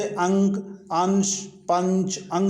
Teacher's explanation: तो आप जैसे जानते हैं कि अनुनासिक के उच्चारण में नाक से बहुत कम ध्वनि निकलती है और मुंह से अधिक, जैसे आंसू, आंत, गांव, चिड़िया इत्यादि। पर अनुस्वार के उच्चारण में नाक से अधिक सांस निकलती है और मुंह से कम